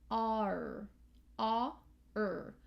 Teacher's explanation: So our tongue is down for the ah, and then it pops up and is hovering in the middle, R, R. So it's down, up, down, middle. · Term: R control vowel